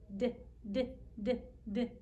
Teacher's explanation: do we need our nose to make the d sound no we could make the sound just fine if we held our nose